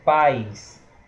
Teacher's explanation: não tem o I na palavra paz, mas a gente lê como se tivesse um I